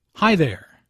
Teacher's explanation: Notice the intonation in this greeting. It rises after “Hi” and falls after “there.”